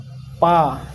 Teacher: प से ओष्ठ, पा, दोनों ओठ लग रहा है ना, पा होठों से